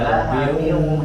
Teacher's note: Kalau lahabiu itu meleburnya sempurna. Dia idgham di gunnah, melebur disertai dengan ada gunnahnya.